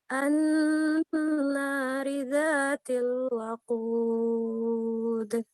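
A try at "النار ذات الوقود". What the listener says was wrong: Ini huruf qaf ya. Coba huruf qaf itu tebal, isti'la.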